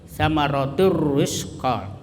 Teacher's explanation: itu tanwin ketemu ra, itu tanwinnya dimasukkan ke ra atau menjadi satu itu ra, seperti tasdid ya, samaratur ra tanpa mendengung. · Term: idgham bila gunnah